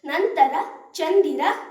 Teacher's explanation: ಈ ಪದಗಳಲ್ಲಿ ಅನುಸ್ವರದ ಮುಂದಿರುವ ಅಕ್ಷರ ತವರ್ಗಕ್ಕೆ ಸೇರುವುದರಿಂದ ತವರ್ಗದ ಅನುನಾಸಿಕ ನಾರೀತಿ ಧ್ವನಿಸುತ್ತದೆ